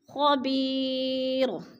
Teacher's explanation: اور خبیرن، دو پیش تنوین ہے، وقف کی صورت میں دو پیش نہیں پڑھیں گے بلکہ جزم میں بدل کر را کو پڑھیں گے